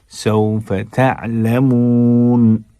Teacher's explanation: کلا سوف تعلمون، تعلمون نہیں پڑھنا ہے، تا، عین کو حلق کے درمیان سے ادا کیجیے